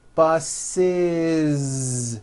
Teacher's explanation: The last sound you hear is that voiced Z.